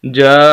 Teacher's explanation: یہ مد ہے، اس کو لمبا کرنا ہوتا ہے، 5 الف کے برابر